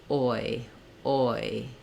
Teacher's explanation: you start with the mouth fairly round and fairly open. And then you close the mouth, the tongue lifts up, the jaw closes, the rounding of the lips goes away, and the tongue relaxes. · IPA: /ɔɪ/